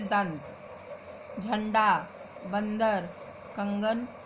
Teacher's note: अनुस्वार का उच्चारण करते समय गले से आने वाली वायु नाक के रास्ते से बाहर निकलती है